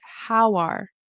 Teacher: the W kind of goes into the next word. How are or it could even be how were.